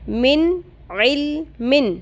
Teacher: نون ساکن کے بعد عین آ گیا، نون کی آواز کلیئر ہو گئی، ظاہر ہو گئی